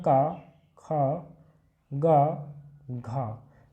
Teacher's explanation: तो जो कंठ्य ध्वनियां हैं वो का वर्ग के अंतर्गत आती हैं।